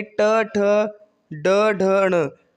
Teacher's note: ट वर्ग का उच्चारण स्थान होता है मूर्धन्य